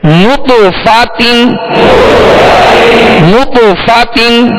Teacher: نط کہیں گے تو ہونٹوں کو گول کریں گے کیونکہ نون پر پیش ہے. فا کی زبر پڑھتے ہوئے آواز اور منہ کھولیں گے، تا کی دو زیر پڑھتے ہوئے آواز کو گرائیں گے.